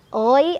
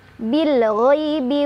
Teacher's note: Ghai ada harf lin karena ada ya sukun, sebelumnya ada fathah di ghain. Cara bacanya dilunakan